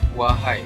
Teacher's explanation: Jadi seterusnya pula ialah janganlah lupa wahai saudara, iaitu wahai dan juga saudara menggunakan diftong, iaitu huruf AI dan juga AU, yang di mana akhirnya cara menyebutnya ialah wahai. Maknanya A itu bunyi A itu ialah penuh dan I itu separuh.